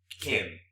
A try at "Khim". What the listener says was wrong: It's like you gotta hear the Y, like Kim.